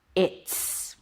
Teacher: The Z sound became an S because the T is voiceless. So it affected the Z sound of the is.